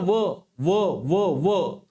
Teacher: दात आणि ओट यांना स्पर्श होतो व म्हणता व व तर व म्हणत असतानी मुखातील जो काही वायू आहे तर त्यांचा जो काही स्पर्श आहे तर तो दाताला आणि ओठाला होतो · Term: दंतोषष्ट